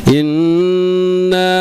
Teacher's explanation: huruf nun atau huruf mim yang bersyaddah itu tidak boleh ada hentakan jadi lembut masuknya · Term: ghunah